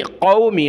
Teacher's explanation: قاف کو موٹا کریں گے، کلرفل ہے، بڑی قاف ہے نکتے والی۔